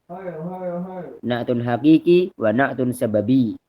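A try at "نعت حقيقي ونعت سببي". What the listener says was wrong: Itu harusnya ditasydid ya. Na'tun haqiqiyun wa na'tun sababiyun.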